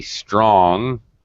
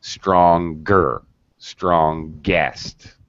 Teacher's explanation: I say strong, right, the NG sound, but stronger, strongest. Now suddenly I'm pronouncing the G when I pronounce the comparative and the superlative.